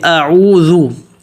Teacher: اب اس میں جو اعوذ ہے، اعوذ، اس کلمے کو دیکھیں کہ پہلے سب سے پہلے حمزہ ہے، اس کو حمزے کو زبر بھی اس کا واضح پڑھنا ہے اور اس کو پتلا بھی پڑھنا